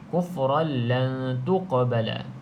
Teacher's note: qaf huruf qalqalah, adakan sedikit lantunan saja sebab dia qalqalah sughra.